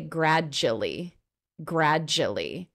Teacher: that du turns into a j